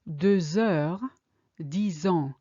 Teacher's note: It doesn't work. X plus vowel or H is still a Z sound. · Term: linking